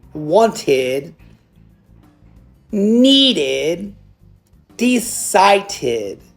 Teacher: it's like the word got an extra little ID sound at the end